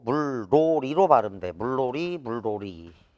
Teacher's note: 리을에 인접한 니은이 리을로 바뀐다.